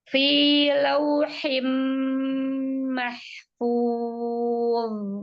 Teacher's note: jangan seperti zal, coba dicekungkan lidahnya, sukun